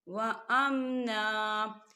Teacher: وقف مطلق کی علامت ہے، تو یہاں ٹھہرنا بہتر ہے، تو وقف کی صورت میں ہم دو زبر نہیں پڑھیں گے، ہم ایک زبر پڑھیں گے